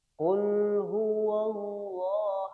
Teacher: Qul diawali oleh huruf qof. Ingat ketika membaca huruf qof ada di pangkal lidah